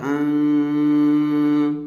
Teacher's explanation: اور ایک بات اس کے ساتھ یوں سمجھیں کہ نون پر جب جزم ہوگا تو وہ ہوگا نون ساکن۔ نون ساکن کو پڑھتے وقت ایک آواز پیدا کی جائے گی ناک میں غننے کی طرح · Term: اخفا